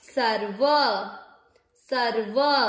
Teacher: हम देखते हैं अधिकतर आधे अक्षर को पिछले वाले पूरे अक्षर के साथ पढ़ा जाता है, सर व पूरा, व के उच्चारण में अ मिक्स करिए